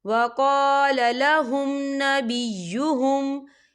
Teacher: میم ساکن کے بعد نون آ رہا ہے تو یہاں پر اظہار شفوی ہو رہا ہے، ہم یہاں غنہ نہیں کریں گے، ہم اسے جلدی سے پڑھیں گے۔